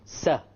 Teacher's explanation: Notice the Sin is right behind the incisors.